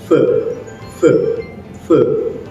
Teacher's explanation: your teeth touch your lower lip and the air keeps flowing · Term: fe sound